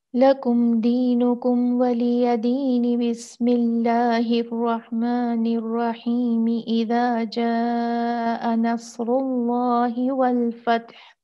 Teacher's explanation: इख्तिताम सूरा, बसमला और सूरा का आगाज एक साथ एक ही सांस में करना।